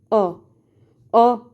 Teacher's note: बोल के देखोगे तो जीभ के बीच वाले हिस्से पर जोर पड़ेगा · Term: मध्य स्वर